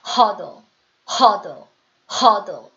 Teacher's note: 힘이 들어갈 때는 혀 끝에 힘이 훨씬 더 많이 들어가고 만약에 악센트가 안 들어갈 때는 혀의 모양만 대준다. 그냥 치경에 대기만 한다